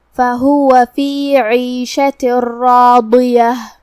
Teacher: آخری میں ہم تا مدورہ پہ رکیں گے تو اس پہ ہا سے رکیں گے